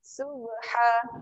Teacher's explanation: Okey, ayat yang ni ada satu qalqalah. Yang ni kena lantunkan. Lantunan yang kecil.